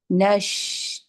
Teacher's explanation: شین کے اندر آپ کی پوری تفشی ہے، پھیل جا رہی ہے پورے مخرج میں آواز، اور لائٹ لیٹر ہے۔